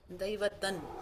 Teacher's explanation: It is anuswara gets replaced by the dantya nakara.